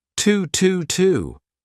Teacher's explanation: want me now instead of saying to you can say t a very unstressed t but connect it to your next sound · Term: linking